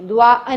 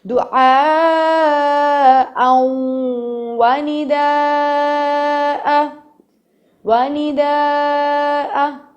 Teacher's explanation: کیونکہ جب بھی ہمیں تنوین کے بعد نون ساکنہ کے بعد یمون یعنی یا میم واو نون میں سے کوئی حرف دکھے گا, ہم نون کو ختم کر کے ورڈ کو اس سے ملاتے ہوئے کچھ دیر کے لیے ناک میں لے جائیں گے, غنہ کریں گے. ادغام ہو رہا ہے یہاں پہ.